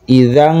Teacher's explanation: Maka dibacanya ikhfa samar dibaca eng. Idang karena paling jauh dia.